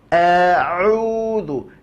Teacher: murnikan keluarnya dari tengah tenggorokan, maka ia tak akan masuk ke dalam hidung. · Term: huruf ain